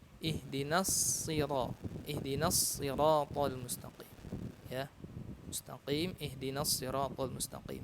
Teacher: kalau kita membaca huruf shad pada kata as-sirat itu harus mengeluarkan sifat tebalnya ya, isti'la, namanya isti'la dan itbaq ya.